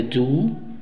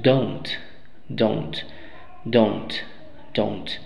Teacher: larga do si contraemos con not qué es lo que pasa cambiamos el sonido de esa u larga a un sonido de una o larga que es ou en vez de do decimos don't don't don't